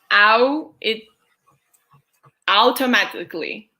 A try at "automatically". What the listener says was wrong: Yeah, we do not say ow. We do not say ow. We say just automatically. And that's if you're trying to pronounce it like technically with the spelling. If you're hearing a Canadian person or most Americans saying it, they're going to say automatically. In which case, it sounds more like it has D's instead of T's.